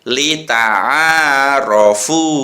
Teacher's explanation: A-nya panjang, fu-nya juga panjang.